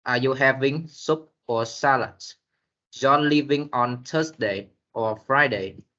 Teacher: The tone rise on the first part and fall on the last part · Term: Alternative question